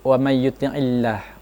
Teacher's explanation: Kemudian cara membacanya cukup tipis, wa may yuti'illah karena huruf kasroh. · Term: tarqiq